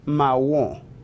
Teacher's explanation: La pronunciación es realmente similar al español, pero requiere suavizar un poco la R, ¿bien? Y la nasalización al final se reduce.